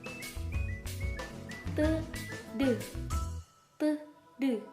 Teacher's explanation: Ujung lidah menekan rapat pada gigi atas bagian dalam. T, T.